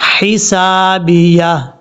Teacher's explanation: انی ملاق حسابیہ، یہاں پر با کے بعد جو یا ہے اس یا کو کلیئر کرنا ہے. حسابیہ، یہ ہا بریک ہے، اس کو بھاری نہیں پڑھنا، حسابیہ نہیں پڑھنا، حسابیہ.